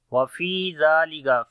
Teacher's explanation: Fi we long due to yamadda is there. Zalika. Zal we read in soft sound and also we long due to standing fatha on it.